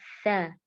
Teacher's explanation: Nah, huruf sa sering tertukar dengan huruf sin ya. Huruf sa di sini rumahnya atau makhrajnya keluar dari ujung lidah bertemu dengan ujung gigi seri atas ya. Jadi posisinya lidahnya agak keluar sedikit ya, sa.